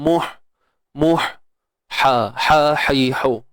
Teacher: ha pedas, tengah kerongkong kita kena sempitkan dia